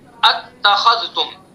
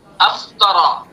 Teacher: دوسرے حمزہ کو حذف کر دیا جائے گا اس صورت میں، اور پہلے حمزہ کو تحقیق سے پڑھا جائے گا